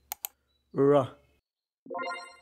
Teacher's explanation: يتم ثني طرف اللسان للأعلى ثم للخلف باتجاه الجزء الخلفي من التلال السنخية لينتج الصوت ر. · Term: Retroflex